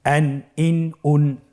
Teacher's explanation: তানবিনটি আসলে বাংলা আমরা যেভাবে দন্ত ন উচ্চারণ করি, অন্য শব্দের সাথে কানেক্টেড করে সেভাবে উচ্চারণ হবে